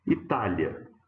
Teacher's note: paroxítona com um ditongo na última sílaba